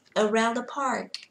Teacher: từ này có một chữ R, các bạn hơi cong lưỡi một chút vì đang sử dụng American English